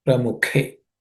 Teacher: This Thi, in this Thi, which is a compound consonant, the Th is aspirated, which is second letter in the third class of consonants. Pramuhe, the K is the second letter in the K class of consonants. So it is aspirated K, Pramukhe. It comes from the Mukha.